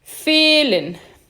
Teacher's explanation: Depois eu vou ter o E longo. Atenção, ele é um E mesmo. Ele é fechado e longo.